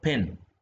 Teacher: local English means Regional uh English Standard English the initial voiceless there is a puff of air being released along with it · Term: aspirated